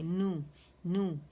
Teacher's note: پہلے نون پہ جائیں گے، اس کا مخرج پکڑیں گے، پھر اس کو گولائی دیں گے، نو، ٹھیک ہے.